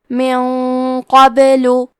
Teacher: حرف القاف حروف التفخیم میں سے ہے تو ہم یہ غنہ کو بھی بھاری آواز میں ادا کریں گے